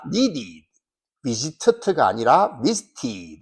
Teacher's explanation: 그래서 같은 발음이 연속되면 이상하니까 가운데 자음과 자음 사이에 모음 e를 넣어서 발음을 부드럽게 만들어줍니다. 그래서 needed가 아니라 needed, visited가 아니라 visited 이렇게 ed라고 발음한다는 것이죠.